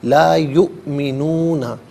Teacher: یؤمنون میں حمزہ ساکن ہے، اسے جھٹکے کے ساتھ پڑھا جائے گا